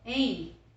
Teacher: Esse M tem som de I. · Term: ditongo decrescente